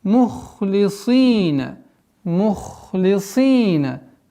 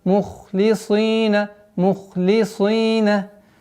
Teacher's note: Ха твердый, сад твердый, и поэтому огласовка кесра легко теряется. Мухлисина. И нужно мухлисина, мухлисина.